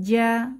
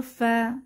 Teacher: আর ইস্তিফালের ক্ষেত্রে তার বিপরীত। জিহ্বার গোড়াটা উচ্চারণের সময় নিচের দিকে চেপে থাকার কারণে হরফগুলো পাতলা হয়